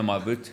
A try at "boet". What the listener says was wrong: You don't say boot, you must say my bot. Yeah, it's more, Yeah, bot.